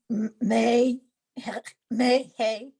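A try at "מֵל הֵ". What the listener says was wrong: Mel Hey. Blend into the lamed.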